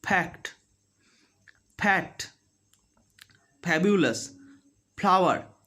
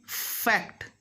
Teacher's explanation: But whereas people of Bengal, Orissa and some areas of Jharkhand as well, they make it bilabial, means the 2 lips will touch. And instead of fricative, they make it a plosive. Plosive means complete closure, sudden release, means air will not come out.